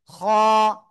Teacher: গলার শেষ ভাগ থেকে মোটা আওয়াজে উচ্চারণ করতে হবে